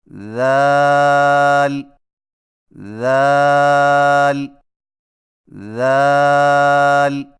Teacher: ذال کی ادائیگی میں زبان کی نوک کو ثنایا علیہ کے اندرونی کناروں سے نرمی سے لگا کر باریک آواز میں پڑھیں